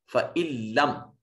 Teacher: फ़इल्लम, नून साकिन के बाद हरूफ यरमलून में से लाम है, नून को लाम से मिलाते हुए ऐसे मिलाएंगे कि यहाँ नून अपना वजूद बरकरार नहीं रखेगा और आवाज नहीं आएगी, इदगाम ताम होगा।